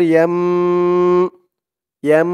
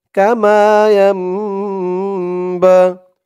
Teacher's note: ইয়াম বলে আবার গুণনা করতে হবে। ইয়া দিয়ে নুন না ধরে যখন মিম ধরবে, তখন একটু গুণনা হবে, ইকলাব গুণনা।